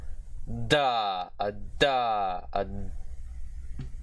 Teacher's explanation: This is specifically dentalveolar, I've guessed. So this is the voiced dentalveolar plosive consonant.